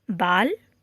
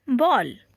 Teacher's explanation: पहला है अर्धचंद्राकार तथा दूसरा है नुक्ता वाले। अर्धचंद्राकार वाले वर्ण का उच्चारण आ तथा अ के बीच का होता है।